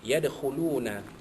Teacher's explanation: Yadkhuluna dal mati itu, dal sukun itu adalah qalqalah sughra, lantunannya sedikit sahaja kerana ini tengah kalimah